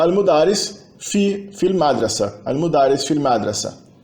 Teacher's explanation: o A do artigo definido al, ele acaba se perdendo quando antes dele vem uma vogal. A vogal anterior absorve o al, então a gente não tem fi al madrasa, assim, fil madrasa, na escola.